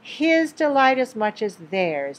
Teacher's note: stress because it is contrasted his Delight as much as theirs when we emphasize something for a reason then we need to pronounce all of the sounds including the H sound